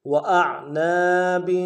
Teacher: حمزہ کو عین کے ساتھ ملانا ہے، عین کو موٹا ادا کریں گے ، نون کے ساتھ الف مدہ ہے، ایک الف میں کھینچیں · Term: غنہ